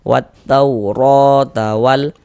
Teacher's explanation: Wat tauro huruf ro memiliki harakat fathah ya, memiliki tanda baca fathah, memiliki baris fathah. Maka huruf ro dibaca tabkhim, dibaca tebal sehingga pangkal lidah kita naik terangkat ke atas